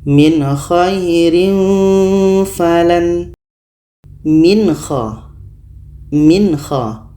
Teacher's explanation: Nah, harus kita baca jelas. Nun jelas, kha jelas dan tidak ada dengung. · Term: izhar halki